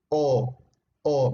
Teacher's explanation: A diferencia de la A, que es más abierta, la O se tiende a cerrar más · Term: media posterior